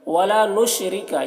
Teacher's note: را کو باریک پڑھیں گے، را کے نیچے زیر ہے